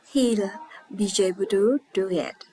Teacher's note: Did you notice the j sound connecting the words?